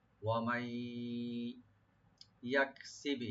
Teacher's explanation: নুন সাকিনের পরে যেটি ইয়া আসছে এখানে ইদগাম উইথ গুন্নাহ হবে। · ইয়াক কাপে একটু হামস করব আমরা, ইয়াক কিন্তু কলকলা হবে না, সি বলবো। আর বাদ একটু কলকলা করব, একটু না একটু বেশি করে করতে হবে।